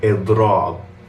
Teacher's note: stretch out the ending of the word with a long a sound after the second letter of the root · You have the e sound in the beginning, then a long a sound to finish off the word.